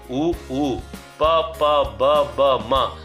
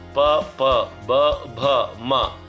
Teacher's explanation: ಈ ತುಟಿಯ ಸಹಾಯದಿಂದ ಹುಟ್ಟಿರ್ತಕ್ಕಂಥ ಅಕ್ಷರ ಇದಂತೂ ತುಂಬಾ ಸ್ಪಷ್ಟವಾಗಿ ಗೊತ್ತಾಗತ್ತೆ. ಎರಡೂ ತುಟಿಗಳು ನಮಗೆ ಸ್ಪರ್ಶ ಆದಾಗ ಈ ಅಕ್ಷರ ಹೊರಡುತ್ತೆ, ಈ ಧ್ವನಿ ಹೊರಡುತ್ತೆ. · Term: ಓಷ್ಟ್ಯಾಕ್ಷರಗಳು